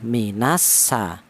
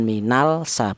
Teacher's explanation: berhubung al ini bertemu dengan huruf sin maka lam sukunnya hilang diidgamkan ke huruf sin. Cara bacanya minas sa bukan minal sa bukan. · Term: idgham